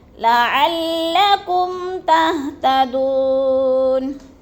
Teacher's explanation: تہتدون، دو پہ وہ مدہ ہے، وہ ساکن سے پہلے دال کے اوپر پیش ہے تو ادھر وہ مدہ کو ایک الف دو حرکات کے برابر ہم نے لمبا کر کے پڑھنا ہے